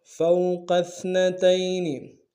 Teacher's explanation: کو موٹا ادا کریں گے، سا کو باریک ادا کریں گے، تا کو یا کے ساتھ ملانا ہے، یا لین بغیر کھینچے پڑیں گے